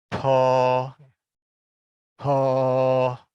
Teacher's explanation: kita mengucapkannya seolah-olah akan mengucapkan pohon, tapi kita pakai hembusan. · Jadi PH ini berarti ada hembusan ekstra